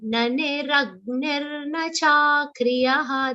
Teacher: There is only one long sound, that is cha. Rest everything has to be short.